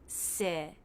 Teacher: Then the I as in sit vowel with a little jaw drop.